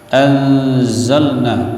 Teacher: anzalna nun mati jumpa dengan zai ikhfa dengung